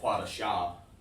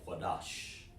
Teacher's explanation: But it gets clipped short. The sha doesn't need a vowel after it because it's been joined with the sound of the da.